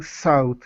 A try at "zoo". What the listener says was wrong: no that's an S say zebra